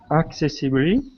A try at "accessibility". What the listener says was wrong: Just the intonation on a couple of those words. Accessible. Accessible.